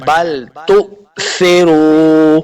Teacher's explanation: حمزہ ساکن کو ہمیشہ جھٹکے کے ساتھ پڑھنا ہے